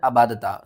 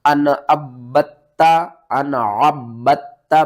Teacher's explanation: आइन को बा के साथ मिलाना है और फिर इस बा को ता के साथ मिलाना है। बा के ऊपर सख्ती करनी है, ता के ऊपर भी सख्ती करनी है, ता को भी 2 बार पढ़ना है और बा को भी 2 बार पढ़ना है